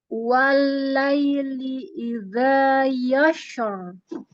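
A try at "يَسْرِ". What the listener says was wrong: Kok yasya? Itu shin atau sin? Shin atau sin? Yassara. Yassara. Yassara.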